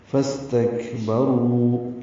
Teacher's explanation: سین ساکن پہ ہمس ہے، تک کاف ساکن پہ بھی ہمس ہے، را پر ہے اور رو واو مدہ ہے.